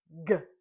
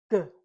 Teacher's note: G is a voiced sound, and when we make the sound, our tongue is on the top or roof of our mouth towards the back. When it drops down, it kicks or pushes out the G sound, and it is a voiced sound.